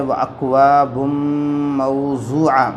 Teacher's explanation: واکواب واو ساکن سے پہلے زبر واولین ہوگا، نرم آواز سے پڑھیں گے